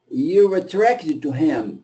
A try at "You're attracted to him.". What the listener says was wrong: More R. You're attracted to him.